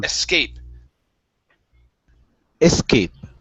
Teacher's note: you want to pronounce the S but the stress is still at the end of the word